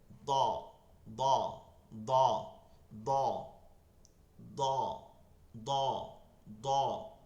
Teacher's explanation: জিহ্বার গোড়ার কিনারা উপরের মারি দাঁতের গোড়ার সঙ্গে লাগাইয়া